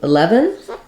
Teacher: 11 is our first 3-syllable number. So we have stress on the lev syllable, which means the first letter E.